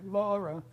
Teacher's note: there's a higher note law and the lower note ra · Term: vocative chant